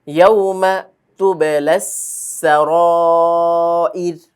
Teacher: রগুলো চিকন হবে, যেহেতু সাকিন র সাকিন তার ডানে আমরা জের পাচ্ছি, ওয়াকফের কারণে রগুলো সাকিন হবে আর তার ডানে আছে জের, সেজন্য রগুলো চিকন হবে।